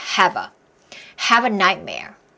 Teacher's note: 역시 have a 안 하고 연음으로 붙여지죠